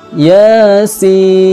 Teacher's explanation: Ya-nya ini dibaca panjang dua harakat. Kenapa? Karena dua ejaan huruf, ya dan alif.